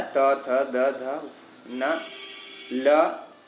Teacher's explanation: ये 7 वर्ण जो हैं दंत से आते हैं